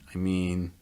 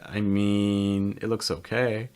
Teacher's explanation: notice that rising intonation on it.